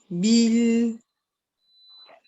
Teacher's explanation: tu frappes le makhraj ba et tu pars directement au milieu de la langue où il y a la ya, et c'est là que tu vas finir le harf, finir le kasra de l'harf.